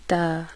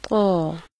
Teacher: تا کے مقابلے میں قا کی آواز موٹی ہوتی ہے. ادائیگی کے لیے زبان جڑ سے اوپر کو اٹھا دی جاتی ہے، جیسے قا، اور تا میں زبان نیچے رہتی ہے، جیسے تا.